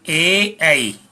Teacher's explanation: इन दोनों स्वरों का उच्चारण कंठ और तालु दोनों के अपेक्षित सहयोग से होता है। मानी कंठ और तालु दोनों का सहभाग होता है। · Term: कंठ तालव्य